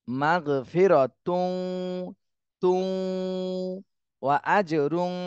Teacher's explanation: এখানে তানবিনের পরে ইদগামে বা গুন্নার হরফ ওয়াও, এজন্য গুন্না সহ মিলাতে হবে।